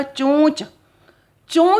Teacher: अब ओ की मात्रा यानी हमने बोला चोंच, चों शब्द जो है, आप देखो मुख और नाक से दोनों से निकल रही है ये ध्वनि